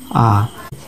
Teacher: যে সমস্ত মৌলিক স্বরধ্বনিগুলি উচ্চারণ করার সময় আমাদের জিহ্বা মুখগহ্বরের সর্বনিম্ন স্থানে অবস্থান করে, অর্থাৎ জিহ্বা একেবারে নিচের দিকে নেমে থাকে, সে সমস্ত মৌলিক স্বরধ্বনিগুলিকে বলা হচ্ছে নিম্ন স্বরধ্বনি।